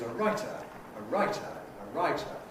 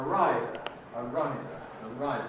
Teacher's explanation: So, writer has clipping, and rider doesn't.